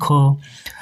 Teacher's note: तो दोस्तों इस प्रश्न का जो सही उत्तर है वो विकल्प सी यानी कि ख। ख जो है स्पर्श व्यंजन है। कंठ ध्वनि है। अघोष और महाप्राण ध्वनि है।